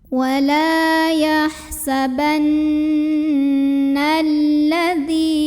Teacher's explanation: Maka cara bacanya huruf nun ini didengungkan ya. Jadi bunyi n-nya tahan sampai ada getaran halus ke hidung, kurang lebih 2 harokat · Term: gunnah musyaddadah